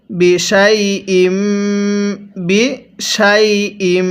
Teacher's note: মিমের মধ্যে তাসদিদ, এজন্য আমরা গুনাহ করে পড়ছি। অবশ্যই আপনি যেখানে মিম এবং নুনের উপর এই তাসদিদ চিহ্নটা দেখবেন, ওই মিম এবং নুনকে আপনি গুনাহ করে পড়বেন।